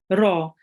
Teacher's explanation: it's a thick letter, and we have to pronounce it with the mouth rounded